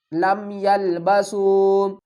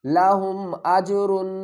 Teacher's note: یہاں پر ہم گنہ نہیں کریں گے اور نہ ہی اخفا کریں گے بلکہ اظہار کریں گے، یعنی میم کی آواز کو ظاہر کریں گے۔